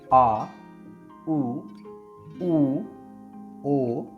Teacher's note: जिन स्वरों के उच्चारण में जीभ का पिछला भाग सामान्य स्थिति से उठता है